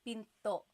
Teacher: Do you hear the glottal stop when I say pinto?